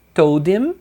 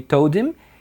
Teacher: o him também perde o H